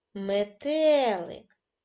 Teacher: визначте наголошений склад метелик наголошеним буде другий склад